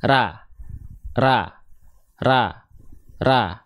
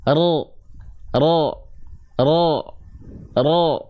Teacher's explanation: sekarang Coba angkat pangkal lidahnya yang asalnya ra menjadi ro